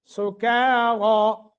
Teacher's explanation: کاف باریک، را موٹا اور کھڑی زبر ہے